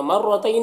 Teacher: مرتین، یہاں پر رائے مشددہ کے اوپر زبر ہے، را کو پر پڑھیں گے